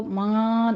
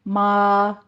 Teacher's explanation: अला मा आताहुमुल्लाहु में माँ की आवाज़ आपने नाक में नहीं लेके जानी